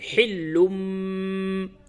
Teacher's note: نون اور تنوین کو اس میم سے بدل کر کے غنے کے ساتھ پڑھتے ہیں۔ اس قاعدے کو اقلاب کہتے ہیں، یعنی قلب کی جمع اقلاب۔